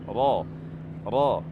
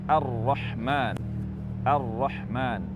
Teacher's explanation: Saat kita mengucapkan kata Rasul, huruf ra berharakat fathah maka dibaca tafkhim, yakni dengan mengangkat pangkal lidah dan tengah lidah kita membentuk permukaan cekung